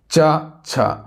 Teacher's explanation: च वर्ग का जो उच्चारण होता है वो तालव्य से होता है, यानी कि तालु से होता है